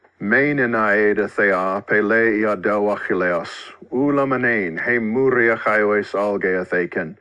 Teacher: The dactylic part means that every foot in each line is composed of a long and then 2 short syllables, almost exactly like music in which a measure is comprised of a half note and 2 quarter notes, a long syllable and then 2 short syllables. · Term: dactylic hexameter